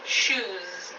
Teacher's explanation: shoe ends with a vowel and all vowels are voiced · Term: z ending